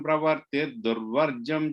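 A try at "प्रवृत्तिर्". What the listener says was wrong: Third line, last word, pravrittir, vr sound. You said pravattir is pravrittir.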